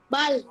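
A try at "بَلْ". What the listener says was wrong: Tidak boleh mantul ya. Jangan bala. Bala. Tidak boleh, tapi bal.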